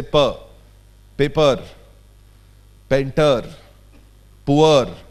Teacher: Purr in English is a slightly explosive sound. There is an abdominal pressure involved. And most of us who speak English as a second language in India articulate this sound with a little sober articulation.